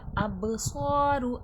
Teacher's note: اب با میں قلقلے کے صفات واضح ہوگی، آواز پلٹ کر سنائی دے گی۔